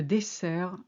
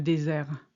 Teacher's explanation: when you have a double S in French, it's always a hard S sound. But when you have a single S sandwiched between two vowels, it makes a Z